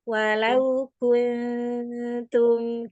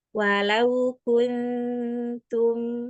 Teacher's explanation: ifanya juga tipis karena bertemunya dengan huruf ta. Walau kuntum gitu nanti tipis-tipiskan walau kuntum ya.